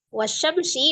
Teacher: di hurufnya itu ada huruf syin ditandai dengan tasdid ya jadi Alif lamnya tidak dibaca langsung di tasdidkan ke huruf Sin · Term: alif lam syamsiah